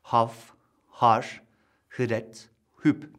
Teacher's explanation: Farsçada tıpkı Arapçadaki gibi boğazlı tonsuz bir art damak sesidir. · Farsçaya özgü sayılabilecek seslerden biri, iki türlü söylenişi bulunan ve alfabede hı harfiyle temsil edilen sestir. Boğaz sonunda dil köküyle art damak arasındaki bir daralma noktasından çıkar.